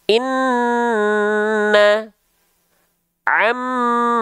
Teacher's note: Nun bertasdid dan mim bertasydid dia baru ditahan dua harakat